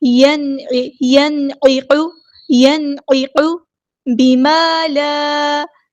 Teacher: نون ساکن کے بعد حروف حلقی میں سے عین آیا ہے، عین کو وسطی ہے لیکن مڈل تھروٹ سے ادا کرنا ہے ، قاف ہمارا ہیوی لیٹر ہے، موٹا ادا کرنا ہے، ینعق